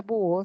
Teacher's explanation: O que la palabra búho, siendo una palabra grave, termine en vocal, no importa. La U aparece con mayor fuerza de voz. Se le coloca la tilde. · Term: hiatos acentuales